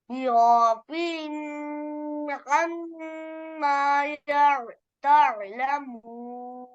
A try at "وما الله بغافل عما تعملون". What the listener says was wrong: بغافل عما यहाँ गुन्ना नहीं करना وما الله بغافل عما تعملون بغافل بغافل عما تعملون تعملون